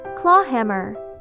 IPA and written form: klɔː ˈhæmər (Claw Hammer)